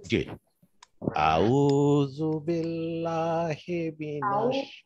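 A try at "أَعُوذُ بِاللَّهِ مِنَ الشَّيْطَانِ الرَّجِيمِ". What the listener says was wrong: আউযু বেশি টান না হয় আউযু বিল্লাহ আউযু একালিক টান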